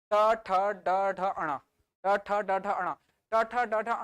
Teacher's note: आपका जीभ मुड़कर ऊपर चली जा रही है। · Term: मूर्धन्य